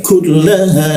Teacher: di siku tenggorokan, lidahnya diturunkan, rongga udara terbuka, ada hembusan udara